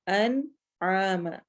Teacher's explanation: نون ساکن واضح، کیوں؟ کیونکہ اس کے بعد عین آ رہا ہے